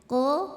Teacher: qo dari pangkal lidah keluarnya pangkal lidah kita mengangkat ya Ko enggak ada anginnya